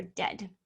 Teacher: this case we have the e a in the middle and instead of making the long e sound like in the word read it's going to make the short e sound like in the word red